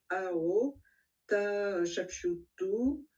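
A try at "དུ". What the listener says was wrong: Attention, c'est bien a dou. On parle bien de dou et non pas de tout, hein.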